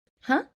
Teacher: intonation up it doesn't sound so abrupt or maybe too casual